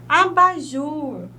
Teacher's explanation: nessa palavra a última sílaba é mais forte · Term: oxítonas